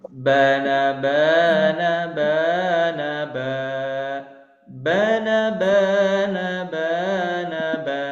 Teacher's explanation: Diingat baris pertama yaitu masih ee rendah. Kemudian yang kedua yaitu naik atau meninggi. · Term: irama